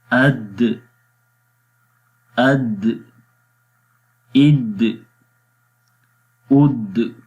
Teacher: یہ جو جنبش ہو رہی ہے آخر میں یہ قلقلہ کی ہے.